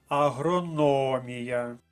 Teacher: наголосна на третьому складі